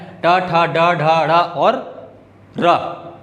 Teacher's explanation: ट ठ ड ढ ढ़ और र, ये सभी क्या होते हैं, मूर्धन्य व्यंजन होते हैं। उनका उच्चारण हम कहाँ से करते हैं, मूर्धा से करते हैं।